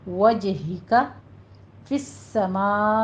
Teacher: सीन के ऊपर हमारी हमस होगा और सीटी की आवाज़ लेकर आइए